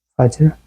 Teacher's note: ফাজর জিম সাকিন, যেটা হচ্ছে আমরা কলকলা করব।